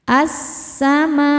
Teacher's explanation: alif lam tidak dibaca, masuk langsung ke sin. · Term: alif lam syamsiyah